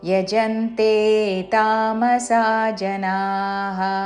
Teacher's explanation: చివరిలో నా దీర్ఘము మళ్ళీ విసర్గ